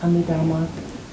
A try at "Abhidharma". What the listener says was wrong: Abhidharma, not Amidharma.